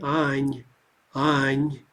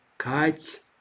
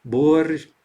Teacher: we just want to drop the ah vowel. Now, keep in mind that may leave us with a soft consonant at the end. So Anya, if we call out to Anya, we'd say Any, Any, right?